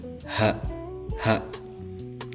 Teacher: ha itu hanjari tenggorokan, cuman di tenggorokan paling ujung